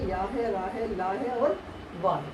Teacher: ये सटते नहीं है बल्कि क्या है? केवल छूते हैं, एक स्पर्श होता है जब इनका उच्चारण करते हैं। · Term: अंतस्थ